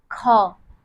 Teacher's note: हमारे मुख से वायु अधिक निकल रही है। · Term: महाप्राण